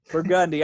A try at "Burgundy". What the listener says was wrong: Emphasis on the wrong syllable.